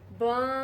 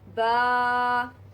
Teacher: جب ہم با کو ادا کریں تو ہماری آواز منہ کے خالی حصے میں رہے، ہم اس کو ناک کی طرف نہیں لے کے جائیں